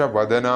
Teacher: വദന ദയാണ് അവിടെ അത് ശ്രദ്ധിക്കണം [സംഗീതം] ധന എന്ന് ഉച്ചരിക്കരുത് അതുപോലെ വതന എന്നും